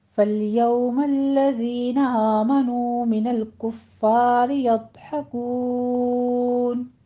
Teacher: فل یو میں لام ساکن کرنا ہے، سٹاپ کیجئے، یو میں واولین ہے · آمنو میں فتح قائمہ اور واو مدہ ہے، 2 کاؤنٹ کیجئے